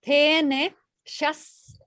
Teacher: So you got a palatal, so you got the sh, and then you're going to go to a dental